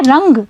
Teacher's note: जब आप रंग शब्द का उच्चारण कर रहे हैं तो अनुस्वार की ध्वनि का उच्चारण नाक से हो रहा है